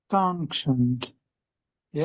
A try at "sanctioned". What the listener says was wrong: Um, I think sometimes your ends can sound a bit French. So you a little bit too much of the sound is coming through your nose. It seems. I mean, just be aware of it.